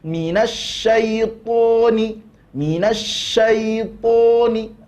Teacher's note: Ini huruf ta, posisi lidah kita seperti ini. Tapi ketika huruf to, maka posisi lidah kita akan menggembung pangkal lidahnya. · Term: sifat isti'la